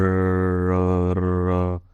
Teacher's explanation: जीभ ऊपर की तरफ मुड़ जाते हैं जब हम र बोलते हैं। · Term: लुंठित